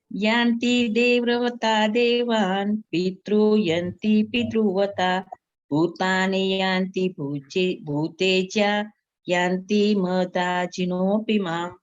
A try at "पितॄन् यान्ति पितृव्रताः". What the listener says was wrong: ये पितृन्यान्ति है, न को यह जुड़ा हुआ है। पितृन्यान्ति पितृव्रताः। पितृन्यान्ति पितृव्रता।